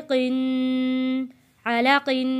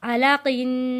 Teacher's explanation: यहाँ पे क़ाफ के नीचे दो ज़ेर है, आवाज़ क़ाफ की क़िन नीचे की तरफ गुन्ने के साथ आएगी